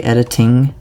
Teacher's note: I always say editing with like an emphasis on the T sound because if I don't I'm just naturally going to say editing